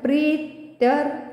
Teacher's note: प्री वर पुन्हा आघाती कारण की पुढे जोडाक्षर आहे हे जोडाक्षर आहे त्यामुळे आणि प्री दीर्घ असल्यामुळे प्रीतर पुढे रफार